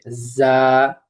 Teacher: জিহ্বার আগা সামনের নিচের দুই দাঁতের পেটের সঙ্গে লাগিয়ে উচ্চারিত হয় যা। তার সঙ্গে একটু কড়কড় আওয়াজ হবে যা। হ্যাঁ, আমার সাথে বলো যা।